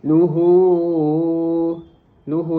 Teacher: Luhu di situ merupakan madilah tawilah yang dibaca panjang empat atau lima harakat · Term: mad silah tawilah